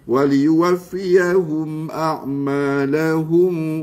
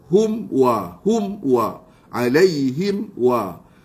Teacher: Akada wa asyaddu izharan, maksudnya kita nak kena grip mulut kita rapat, hidung jangan dikeluarkan gunnah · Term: izhar syafawi